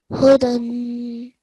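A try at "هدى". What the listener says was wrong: Huda. Don't make the dal thick and heavy. It's just a thin sound, yeah? Huda.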